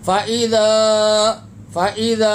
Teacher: 3 انگلی کی مقدار اس مد کو کھینچ کے پڑھیں گے، یعنی 3 سیکنڈ تک کھینچ کے ادا کریں گے. چھوٹا مد ہے.